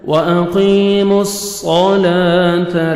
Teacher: میم کو اپنے صاد کے ساتھ ملانا ہے، صاد کو موٹا کر کے پڑھنا ہے ، وَأَقِيمُوا الصَّلَاةَ، لام کو مرکھڑ زبر ہے، 1 سیکنڈ کھینچیں